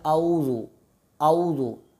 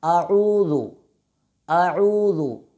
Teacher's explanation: बाज़ तलबा कैसे पढ़ते हैं आऊज़ु आऊज़ु। आऊज़ु पढ़ने में लफ्ज़ आइन कट जाता है जिससे गलती होती है, तो इसको पढ़ने का दुरुस्त तरीका ये है अऊज़ु अऊज़ु।